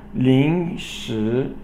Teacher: 临 second tone, 时second tone, and these are both rising tones